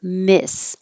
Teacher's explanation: the stressed vowel is i so not e but the tongue's a little lower